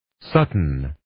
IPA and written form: 'sʌtʌn (Sutton)